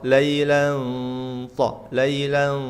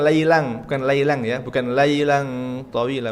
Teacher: Ini fathatain ketemu ta itu ikhfa. Dan sedikit masuk ke makhraj huruf ta.